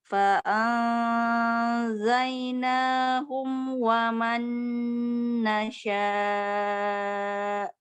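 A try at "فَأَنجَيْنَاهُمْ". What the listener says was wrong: Ini masih bacanya fa'am, nggak boleh ada eng ya, nggak boleh ng, nggak boleh n. Cuman kayak gue bilang fa'ad, coba bilang fa'ad. Nggak, bilangnya kayak mau bilang hamzahnya setelah hamzah itu huruf jim sukun. Fa'ad. Jadi mulutnya kayak mau bilang jim gitu ya. Jadi fa'anjainahum.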